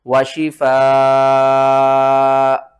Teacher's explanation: صورت میں حمزہ کے اوپر دو پیش ختم ہو جائیں گی، یہاں پر ہوگی مد متصل، تو آپ نے اس کو کتنی الف کے مقدار کھینچنا ہے، 5 الف کے مقدار کھینچ کر پڑھنا ہے